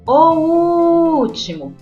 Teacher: a terceira sílaba de trás para frente que intensificou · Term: proparoxítona